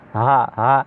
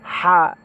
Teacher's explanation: ছোট হাটা হচ্ছে নর্মালি গলার কণ্ঠনালীর শুরু থেকে উচ্চারণ হয় হা হা, আর বড় হাটা হচ্ছে হা